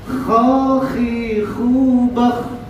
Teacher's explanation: Kalau ha tidak ada getaran, kalau kha ada getaran.